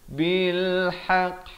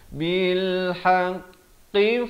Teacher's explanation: ha pedas di pertengahan kerongkong